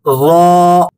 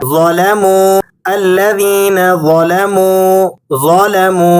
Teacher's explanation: زبان کے پچھلے حصے کو تالو کی طرف بلند کریں گے اور موٹی آواز میں پڑھیں گے